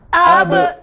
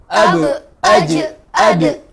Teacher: Ini tiga huruf mantulnya kepada e. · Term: huruf pantulan